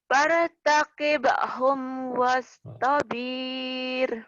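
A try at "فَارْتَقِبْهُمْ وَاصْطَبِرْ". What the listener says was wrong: Nggak ada yang panjang itu mah, pendek. Wastabir. Jadi walaupun lagu di sini nggak bisa macam-macam. Karena nggak ada mad di sini. Fartaqib paling cuma dilambatin doang. Nggak bisa panjang ya. Di sini karena nggak ada mad di sini.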